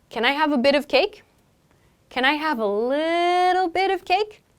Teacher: So little, like extending that sound, makes it sound like the piece we want is even smaller.